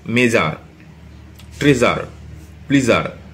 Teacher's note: তো সেক্ষেত্রে দেখো এখানে এস কিন্তু উচ্চারণ হয়েছে, এই যে এসটা উচ্চারণ হয়েছে কিন্তু বর্গজ আকারে